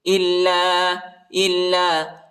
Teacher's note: حمزہ کو لام کے ساتھ ملائیں گے اور لام کو شدت کے ساتھ سختی کے ساتھ پڑھیں گے